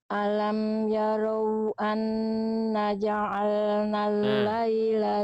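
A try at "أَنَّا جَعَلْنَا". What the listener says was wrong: Anna ja'alna. Nanya berapa harokat? 2 karena ada fathah ketemu alif. Bunda tadi baca cuma 1 harokat.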